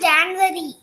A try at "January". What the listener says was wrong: January. Don't say January. There is no V over there. January.